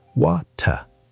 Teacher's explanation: Australians also have a clear T sound, more like British